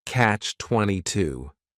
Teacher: The word catch is just one syllable and then 22 is three syllables and the stress is on that final syllable